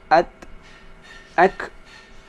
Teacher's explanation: ketika membaca huruf ta dan kaf mati, maka ada sedikit desisnya. Ingat, sedikit aja desisnya.